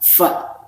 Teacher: Fa ini antara bibir bawah dengan ujung gigi seri atas